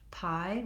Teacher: In American English, pie, we have a little bit of a release of air.